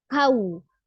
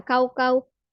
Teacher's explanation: wow sukunnya u ya dengan memunculkan bibir kau bukan kau-kau nah seperti itu tapi kau Kalau kau ya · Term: wau sukunnya